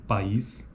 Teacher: de vogais cada vogal corre em sílaba diferente Observe ainda que em sequências de vogais como na palavra país cada uma das vogais tem proeminência acentual constituindo pico de sílaba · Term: sequência de vogais